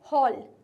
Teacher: Next है हमारा word हॉल, जिसमें एल का क्लियर साउंड आ रहा है।